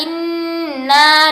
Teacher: Pada saat Ustazah membaca inna ya, itu kan nun bertasdid ya. Nun bertasdid itu harus ditahan sementara ya.